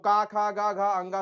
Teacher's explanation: क वर्ग का उच्चारण कंठ से होगा